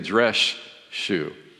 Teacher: The s turns into a sh.